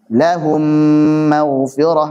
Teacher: masuk ke mim berikutnya dan dipanjangkan gunnahnya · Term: diidghamkan